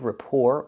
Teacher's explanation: the first word is rapport. The T is silent.